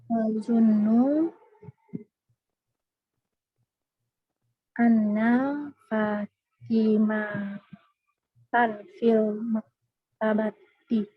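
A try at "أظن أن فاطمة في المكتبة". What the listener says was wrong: Anna Fatimata, tidak boleh tanwin. Adunnu anna Fatimata fil maktabati.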